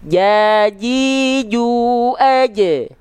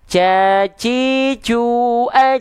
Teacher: Jadi gimana harusnya dilafalkan enggak pakai nafas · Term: jahr